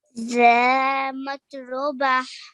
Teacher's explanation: we have an alif mad after the dhal as well, which you did really well to stretch for 2 counts for this because it's a haruful mad.